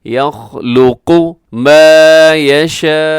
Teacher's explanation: یہاں جو مد ہے بڑی مد ہے، مد متصل، آخر میں حمزہ ہے، وقف کریں گے ذرا جھٹکے کے ساتھ، ہم یہاں پہ رکیں گے۔